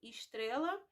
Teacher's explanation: Casca, estrela, também tem a substituição do E pelo I